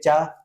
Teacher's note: चा वर्ग का उच्चारण ताल से होता है